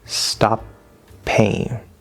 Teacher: connect by making a slightly longer P